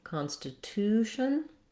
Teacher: The main syllable stress is on the to, constitution. Therefore, that has a clear vowel and you're going to hold that syllable longer.